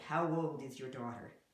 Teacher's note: A silent imaginary W, not a silent, but a very light imaginary W next to old